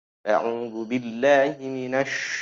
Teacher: Apa yang dimaksud dengan meluas? Meluasnya udara ketika kita mengucapkan huruf shin. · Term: at-tafashi